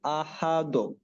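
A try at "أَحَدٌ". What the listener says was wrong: হবে না, দোর দিকে যেন না যায়। দ, দ, আহাদ, আহাদ, আহাদ।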